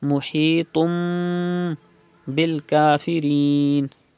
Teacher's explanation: You can see ba after 2 pesh, after tanween. So it is iqlab. You have to change tanween into meme and do gunna.